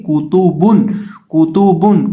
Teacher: یہاں ہم کاف تا اور با تینوں کو پڑھتے وقت ہونٹوں کو گول کر کے پڑھیں گے